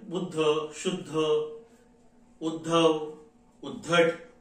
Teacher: द चा उच्चार अगोदर येतो ध चा उच्चार नंतर येतो